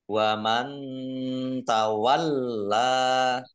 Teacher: nun sukun bertemu dengan huruf ta, bacaan ikhfa, dibaca samar-samar